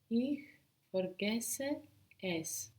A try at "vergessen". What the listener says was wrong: And that's vergessen, not forgessen. Vergessen. Ich vergesse es.